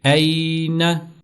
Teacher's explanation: तो या लीन को हम लंबा नहीं करेंगे। इसको नरमी के साथ और जल्दी से अदा करेंगे। · تو یا لین کو ہم لمبا نہیں کریں گے، اس کو نرمی کے ساتھ اور جلدی سے ادا کریں گے۔